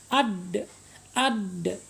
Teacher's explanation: asyiddah asyiddah keras keras artinya Apa artinya dia e tertahan ya tertahan suara kita ketika mengucapkan huruf Dal ya ketika huruf Dal ini bersukun